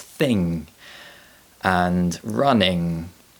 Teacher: the sound is produced by pressing the back of the tongue against the top of the mouth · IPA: /ŋ/